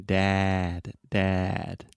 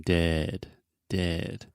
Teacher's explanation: And again, if you look in a mirror when you're saying this, when you say dad, your mouth is really, really open. It kind of looks like a square shape. And then dead, your mouth is much more closed.